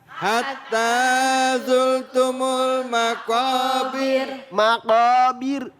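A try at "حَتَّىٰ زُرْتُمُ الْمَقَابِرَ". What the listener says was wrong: Jangan bir begitu. Takrirnya cuma takrirnya enggak terlalu panjang ya. Terlalu panjang. Jadi di sini ini maqabir. Nah, berarti dibaca tar dibaca tip. Tipis bu, tipis. Ada yang tebal. Kalau ro, dengerin mak.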